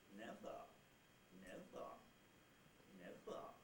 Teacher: All right, the other way to do it is the second block on that line, and that is where you have the nucleus syllable itself rising to a high pitch from a mid-level pitch, a midish pitch, or a bit lower than that, and then the tail syllable is low. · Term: rise fall